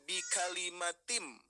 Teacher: Maksudnya ini asalnya kan bi kalimatin ya. Kita baca saja menjadi bi kalimatim, langsung ke emnya, ke mimnya ya.